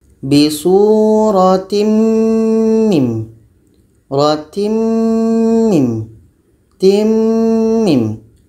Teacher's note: Tanwin bertemu mim, nun mati bertemu dengan mim. Tanwin ini kita masukkan kepada mim.